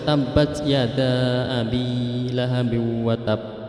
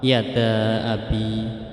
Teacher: Jadi panjangnya tidak terlalu panjang, cuma 2 harokat. Yada abi. Tapi lebih baiknya dibaca seperti mad wajib mutasil, yaitu 5 atau 6 harokat, yaitu membacanya tabbat yada abi lahabi wa tab. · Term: mad jaiz munfasil